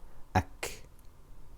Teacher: It is shidda, it is hams, because the breath continues, ak, ak, but the sound does not. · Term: kaf